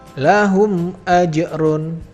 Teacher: cara membacanya yaitu harus jelas tidak boleh didengungkan apalagi ditahan dua harokat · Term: izhar syafawi